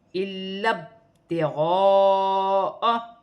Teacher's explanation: لام مشدد ہے تو مشدد حرف 2 مرتبہ پڑھا جائے گا. ایک حمزہ کے ساتھ ملا کر پڑھا جائے گا، ایک لام کو با کے ساتھ ملا کر پڑھا جائے گا.